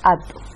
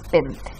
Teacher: Aquí se omite uno de los fonemas del diptongo o dífono vocálico. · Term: reducción de diptongo